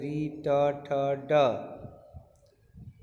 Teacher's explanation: मूर्धन्य, इनका उच्चारण तालु के मूर्धा भाग से, मूर्धा यानी दांत के ऊपर वाला जो भाग है उससे, ताल के मूर्धा भाग से होता है।